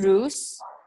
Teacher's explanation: This is the unvoiced sound, which means that you don't make that sound. It's just air going between your teeth and your tongue.